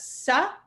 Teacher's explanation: this is Dental so this is just a regular s sound